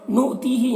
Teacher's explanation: حمزہ ساکنہ ہے واو کی شکل میں تو اسے جھٹکا لگے گا